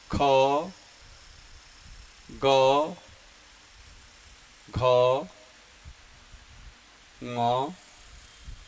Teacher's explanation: इन सब का उच्चारण स्थान कंठ है